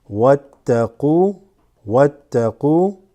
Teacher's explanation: We went from wa straight to the ta that has a shadda. This drops.